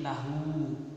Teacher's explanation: kalau dhammah terbalik ini meskipun tidak ada waw sukunnya tetap dibaca panjang. Contohnya seperti lahu.